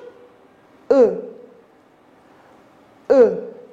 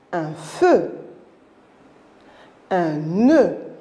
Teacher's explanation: Alors quand j'ai dit feu, regardez ma bouche, E. Alors la bouche est quasiment fermée et un petit peu allongée en avant. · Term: E fermé